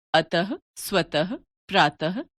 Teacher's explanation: विसर्ग का उच्चारण ह व्यंजन के रूप में किया जाता है।